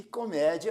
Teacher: temos aqui a semivogal e e depois a vogal a e comédia primeiro a semivogal i e depois a vogal a por isso nós temos um ditongo crescente